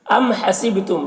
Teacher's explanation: یہاں پر میم میں اظہار شفوی ہو رہا ہے، اسے جلد پڑھیں گے جیسے ہم تم کی میم کو پڑھتے ہیں۔ ام حسبتم، با میں قلقلہ کریں گے، با میں آواز ٹکرائے گی، حسب ایسی طرح۔